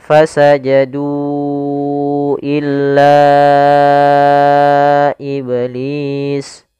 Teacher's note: ada mad tabi'i bertemu dengan hamzah pada lain kata, maka dinamakan mad jaiz munfasil, tidak boleh dikurangi kadarnya, harus 4 harokat